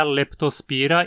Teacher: O I em spira é longo, então a palavra é paroxítona.